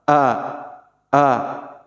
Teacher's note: tandanya makhrijul huruf hamzah ini ada di pangkal tenggorokan